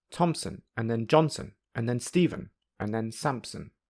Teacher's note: because there are more unstressed syllables in the third and fourth phrases there is no gap between the strong Beats · are spoken more quickly than smaller groups of unstressed syllables you will hear that even though the phrases have a different number of syllables it takes a similar amount of time to say each phrase